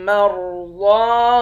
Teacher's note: را اور ضاد ان دونوں حرف کو موٹا پڑھیں گے، ضاد کے اوپر کھڑا زبر ہے، ایک الف کے مقدار کھینچ کر پڑھتے ہیں۔